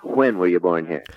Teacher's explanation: This is still a characteristic of some American accents to aspirate the W